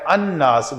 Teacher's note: تو الناس پڑھنے کی بجائے یہ پڑھا جاتا ہے الناس، گویا یہ لام اس نون کے اندر اس کا ادغام ہو گیا حروف شمسی ہونے کی وجہ سے